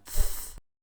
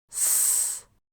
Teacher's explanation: a sibilant, which is a type of fricative where a stream of air is directed by the tongue towards the teeth. This gives it a higher pitch and amplitude, which you can hear yourself when you compare th and s.